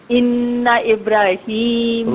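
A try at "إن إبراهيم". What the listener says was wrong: را کو ذرا کھینچے، جس طرح میں پڑھوں اس طریقے سے پڑھیے. ابراہیم پھر آپ وہی پڑھ رہی ہیں، ابراہیم ابراہیم. میری بہن میں را کو کھینچ کے پڑھے نا.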